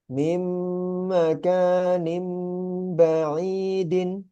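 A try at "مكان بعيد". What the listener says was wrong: Tambah gunanya. Mim makanim ba'idin.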